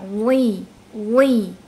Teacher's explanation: Ingat huruf wo ada sifat huruf tebal. Jadi meskipun dia dalam kondisi harokatnya kasroh karena dia huruf itbaq, jadi harus terdengar tebalnya.